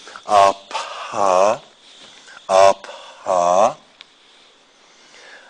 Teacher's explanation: There's a little period of time before you start voicing. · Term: aspiration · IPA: [apα:]